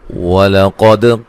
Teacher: قاف کو موٹا دال پہ قلقلہ